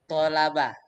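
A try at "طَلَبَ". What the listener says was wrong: Tonya panjang.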